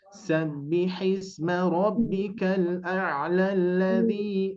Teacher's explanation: Jadi ketika diwasolkan itu tidak dibaca panjang. Yang asalnya tadi Rabbikal a'la dibaca panjang, ketika diwasolkan tidak jadi dibaca panjang, melainkan langsung masuk ke bunyi tasydid.